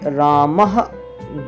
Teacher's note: विसर्ग पीछे रखे जाते हैं अक्षरों के इनका उच्चारण किंचित हा के सदृश होता है